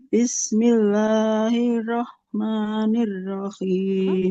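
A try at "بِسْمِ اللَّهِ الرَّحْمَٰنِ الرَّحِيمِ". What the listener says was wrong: Tidak Bismillahirrahman. Haknya nggak panjang. Di depannya huruf-huruf bertasydid kalau basmalah.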